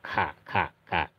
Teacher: mempunyai sifat alhams jadi ada udara yang keluar